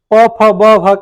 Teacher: प फ ब भ का उच्चारण स्थान किससे होता है ओष्ठ से होता है